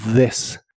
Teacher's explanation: La TH de this suena como una D vibrante